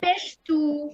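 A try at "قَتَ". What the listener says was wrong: পেশ না, এটা দেখেন, এই যে পেশের মধ্যে আপনাকে পার্থক্য দেখাই আমি। এই যে দেখেন, পেশের মাথাটা এই যে গোল থাকবে, হ্যাঁ, আর এটা হচ্ছে জজম।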